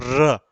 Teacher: कंपन हो रही पूरी जीवा, और लुंठित या जीवा पूरी लुढ़क के उच्चारण कर रही है। अगला है पार्श्विक, यानी पार्श्विक वर्ण। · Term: प्रकंपित